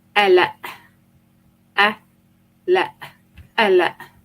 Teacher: depending on the accent, you would have the qaf dropped and the epiglottal sound replaced.